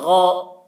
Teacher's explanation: زبر لگنے کے بعد بھی حلق سے ادا کرنا ہے غین کو ، غین کی آواز بھی موٹی ہوتی ہے، غین زبر غا،